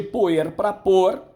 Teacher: de poer para pôr, houve a queda do E. Tá? Essa queda no interior caracteriza uma síncope.